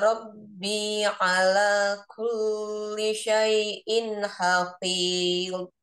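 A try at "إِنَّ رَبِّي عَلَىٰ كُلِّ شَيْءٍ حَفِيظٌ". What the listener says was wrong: Ya, hafil. Lebih panjangnya mat alif disukun sesuai di awal. Hafil. Kemudian tadi kulli, lamnya jangan terlalu lama ya. Inna Rabbi ala kulli syai'in hafil.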